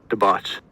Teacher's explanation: I have this as more of an open O, or at least a rounded low vowel. And I think I was saying that, like I talked myself out of this being an ah because it's a little bit too low because it's rounded.